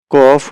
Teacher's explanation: কফ হচ্ছে একটু পিছনের দিক থেকে জিহ্বা একটু পিছন থেকে উপরের তালুর সঙ্গে লাগবে